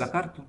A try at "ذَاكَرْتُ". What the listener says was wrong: Nah, dza panjang.